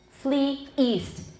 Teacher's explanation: the first has a glottal stop at the beginning of east